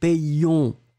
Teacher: le O et le N, ça va être de la nasale